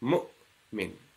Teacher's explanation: It's not mu'min. You do not elongate the sukoon of the hamza. Mu'min. Just a stop there.